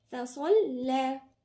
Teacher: الصاد هنا مفخمة واللام مرققة